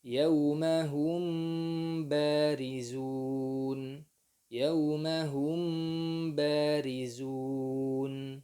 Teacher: Jika ada mim sukun bertemu dengan huruf indal ba'i, dengan huruf ba, maka pada saat itu mim sukun itu disamarkan, diikhfakan pada huruf ba dengan gunnah. Ikhfa ini dikenal oleh para qurra dengan sebutan ikhfa syafawi, ya.